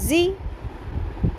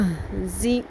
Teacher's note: یا زبر سین یس، تا زبر ہت، یس تا، زا زیر زی، یہ ز ہے، اس میں سیٹی کی ساؤنڈ بھی آئے گی اور شدت بھی ہوگی، نرمی سے نہیں پڑھنا